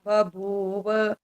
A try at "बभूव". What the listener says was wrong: ये बभूव, ये भी गलत है अभी। ब क्लियर नहीं आता, ब और भ है ना, तो जरा जो इकट्ठे ऐसे ऐसे आ जाते हैं तो वहां उच्चारण गलत होने की संभावना हो जाती है। बभूव, ब भी क्लियर होना चाहिए, भ भी और फिर व भी।